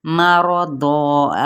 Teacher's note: मीम को बारीक अदा करेंगे लेकिन खींचेंगे नहीं